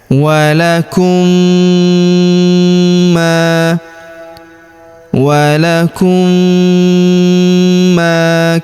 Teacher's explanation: mim sukun bertemu huruf ma berharokat tasydid, maka mim sukunnya melebur ke huruf ma yang berharokat tasydid. Kita tahan dan kita tekan, serta kita dengungkan 2-3 harokat, lalu kita panjangkan 2 harokat huruf ma karena terdapat alif di depannya ya.